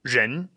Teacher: you start off with your tongue curled back, like all R pronunciations